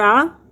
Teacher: کھڑی زبر کو 1 الف کے برابر لمبا کریں گے